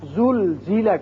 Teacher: یہ جو زا ہے اس میں سیٹی کی آواز ہے